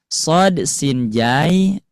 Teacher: letaknya di ujung lidah bertemu dengan ujung gigi seri bawah